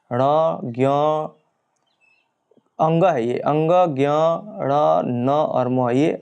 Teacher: मुख द्वार बंद करके खोला जाता है किंतु साथ ही नासिका विवर भी खुला रहता है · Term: अनुनासिक व्यंजन